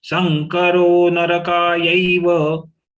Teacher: Sankaro narakayaiva rokayai, they are long letters. The anuswar of sa got converted into nga because next letter is ka. So ka is full.